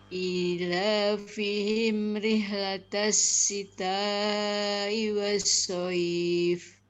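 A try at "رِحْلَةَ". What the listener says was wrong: Hurufnya rih itu terlalu dalam. Rih latas. Bukan rih. Enggak sampai. Rih.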